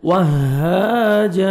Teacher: سے پڑھنا ہے، واو کو ہا کے ساتھ ملانا ہے، وہاجا ہا کو بھی 1 سیکنڈ کھینچنا ہے، الف مدہ